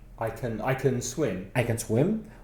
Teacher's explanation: You don't stress the word can. It's a weak form.